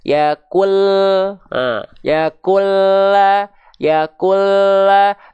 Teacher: Inhiraf itu menyimpang makhrajnya, menyimpang untuk huruf lam itu, ya. Dia itu dilafalkan agak ngegeser ke kiri ke kanan. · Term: sifat inhiraf